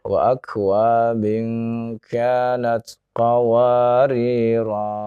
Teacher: Kalau Bapak mau dibaca berhenti, maka Bapak bacanya dengan panjang 2 harokat ya.